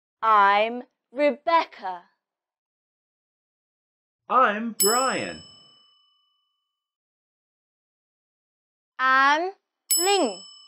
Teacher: the stress in this sentence is on your name